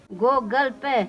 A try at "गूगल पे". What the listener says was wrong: गूगल नहीं, गूगल, गूगल गूगल बड़ा गु होता है इसमें, थोड़ा खींचता है वो।